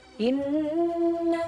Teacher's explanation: Nah, ini bacanya wajib dengung. Panjangnya 2 harokat. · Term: gunnah